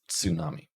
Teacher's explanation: So in English, we would write tsunami and we'd probably pronounce it without the T, but in Japanese, you would pronounce it with the T as one sound with the S